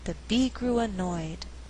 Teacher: In this sentence, we have three content words: bee, grew, annoyed. But I choose not to stress grew so that I have alternating stress.